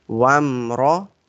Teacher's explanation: Ra sound will be bold because it's having fatha on it.